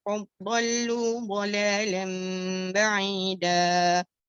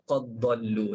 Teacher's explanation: Idgham ya, qad dhallu, dal masukkan dalam dhad.